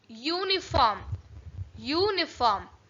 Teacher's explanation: You know that uniform starts with a vowel, but first sound is Y. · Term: consonant sound